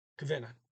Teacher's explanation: there's really a some type of vowel in between the k and the v there but it's so slight kavina i could put something there but it's not worth it · Again, there is a minor, I don't write that down, it's such a minor thing, kavina. There's really some type of vowel in between the K and the V there, but it's so slight